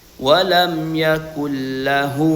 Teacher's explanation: hu di sini dibaca panjang dua harakat. Atau kaidah tajuknya adalah mad silah sugra. · nun ini dileburkan ke huruf lam sehingga bunyi nun tidak lagi kelihatan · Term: idgham bila ghunah